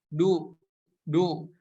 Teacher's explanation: huruf Dal itu tempat keluarnya dari ujung lidah kita nempel ke tempat tumbuh gigi seri yang atas · berharokat dhomah maka cara bacanya harus di monyongkan